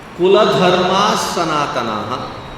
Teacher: When visarga is in the sentence you don't pause to say the visarga.